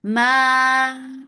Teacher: For the ma circular lips, the sound is short.